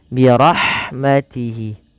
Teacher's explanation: Pelafal hi, panjangkan dia dua harakat karena ada mad silah qasirah